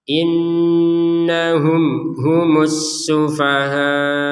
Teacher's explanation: mim sukun bertemu ha ini dibaca dengan jelas